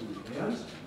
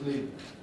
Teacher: it can be pronounced in 2 different ways. Either with 3 syllables, lenient, or as 2 syllables, as lenient.